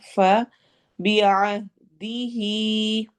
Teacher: عین حلق کے درمیان سے ادا ہوتا ہے اور ہا حلق کے نچلے حصے سے ادا ہوتا ہے